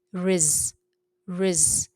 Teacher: there's sukoon, the Quranic sukoon, over the z, so it's z, doesn't move